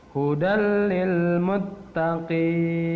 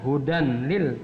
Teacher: Hudal lil, bukan hudan lil, tapi hudal. Tanwannya, n-nya dileburkan atau dimasukkan ke dalam huruf lam. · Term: idgham bila gunnah